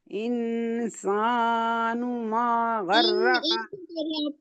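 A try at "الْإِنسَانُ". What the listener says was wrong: इन क्यों कर रही हैं आप? गुन्ना क्यों कर रही हैं आप? इंसानू क्यों? नहीं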